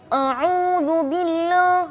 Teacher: kita baca huruf hamzah misalnya yang seharusnya kita bacanya A tapi kita mengalihkan angin huruf A itu ke rongga hidung